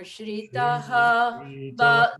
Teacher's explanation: ba is on the same note as taha preceding it.